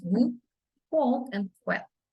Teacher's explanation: Place of articulation is a labial-velar semi-vowel.